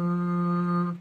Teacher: وصفة من حيث طول وقصر هذه إيه الغنة. نجد مثلا الغنة في الميم مشددة أم طويلة